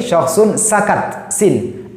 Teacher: Nafasnya banyak ya. Ini pita suara terbuka, ini tidak bergetar, kemudian nafas banyak mengalir.